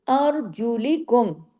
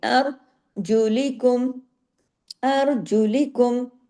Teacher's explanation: او من تحتی، نون سے آگے کے بعد تا ہے، پھر اخفا ہوا، او یہ واو لین ہے، من تحتی ارجلکم، ار، را ہیوی، ار زبر کے اثر کی وجہ سے، لیکن اگلے حرف باریک ہے